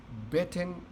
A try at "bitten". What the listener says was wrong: But I think your bitten is like it's soft. So it needs to be hard, like the B, bitten, not bitten.